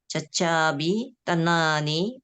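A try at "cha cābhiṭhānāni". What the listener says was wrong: Not tanani. Cacabi dha. Yes, H. Dhana.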